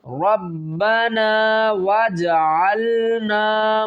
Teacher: جیم ساکن ہے، یہاں پر قلقلہ کریں گے